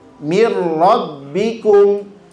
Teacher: takrirkanlah atau getarkanlah pada penyebutan huruf huruf ro itu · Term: getaran huruf ro